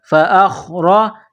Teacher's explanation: را کے اوپر زبر ہے تو را کو موٹا کرنا ہے